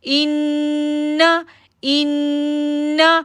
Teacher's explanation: جب ہم نے حمزہ کو نون کے ساتھ جوڑا تو شدت کے ساتھ اور پھر ہم نے غنہ کیا کیونکہ نون پر تشدید ہے